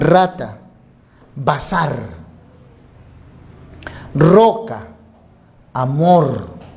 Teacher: este sonido es una vibrante múltiple o vibrante fuerte este si aparece al inicio o al final o en medio